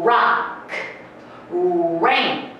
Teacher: R▁の発音は日本語のラ、リ、ルレのように上顎に舌がくっつきません 。どこにも舌をくっつけないでラ、リ、ル、レ、ロとする練習をしてみてください。どこにも舌をくっつけないでしようと思うと口をこのようにすぼめてうーの音を少し言うような感じでラ、リ、ル、レ、ロとすると、R▁の発音がきれいにできます。ラ、ラ、この音でラック、レイン、音節の最初にある▁R▁はこのように発音します。